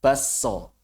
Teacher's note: Fayuqra'u harfu s, maka huruf S dibaca bertasydid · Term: idgham